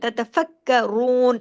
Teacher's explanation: इसमें र हैवी होगा पेश की वजह से